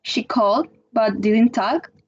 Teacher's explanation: the fall rise juncture phoneme, in which the intonation is down, and then we go up